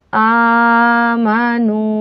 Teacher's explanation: حمزہ خڑا زبر آ، میم زبر ما، نون واو پیش نو، آمنو، خڑا زبر کو بھی ہم نے حرف مدہ کی طرح کھینچ کے پڑھنا ہے، واو ساکن سے پہلے پیش ہو تو واو مدہ ہوتا ہے، ہم نے نون کو بھی کھینچنا ہے۔